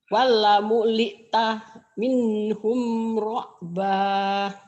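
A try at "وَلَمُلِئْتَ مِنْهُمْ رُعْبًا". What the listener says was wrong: Ke hamzahnya belum nyamber. Wala muli tamin hum ru'ba. Kalau ibu tadi wala muli, mu-nya jangan putus. Taknya pendek.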